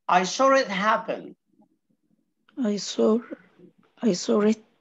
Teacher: يبقى الكلمة دي انتهت بفاول I saw it happen والكلمة دي بدأ بفاول فاول دي آخرها فاول ودي أولها فاول عشان نمنع الالتقاء الاثنين دولت هنحط R في النص